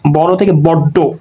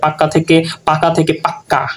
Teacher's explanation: কখনো কখনো জোর দেওয়ার জন্য শব্দের অন্তর্গত ব্যঞ্জনের এই যে ব্যঞ্জন ধ্বনি দ্বিত্ব উচ্চারণ হয়, মানে দুইবার উচ্চারণ হয়। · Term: দ্বিত্ব ব্যঞ্জন